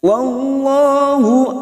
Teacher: kita rasakan bibir kita seperti cemberut ya bukan tersenyum tetapi seperti cemberut itu dinamakan tafkim atau tebal